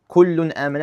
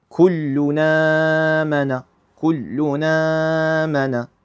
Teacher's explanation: they basically give the vowel that's on the Hamza to the Nun sound that's in the Tanween and the Nun that's here, and they ignore the Hamza.